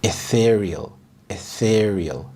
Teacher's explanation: The stress is on the second syllable, ethereal.